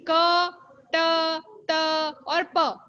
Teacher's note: इसमें हवा स्पर्श कर रही है, संघर्ष नहीं।